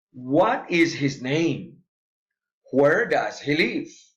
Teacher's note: Special questions with falling intonation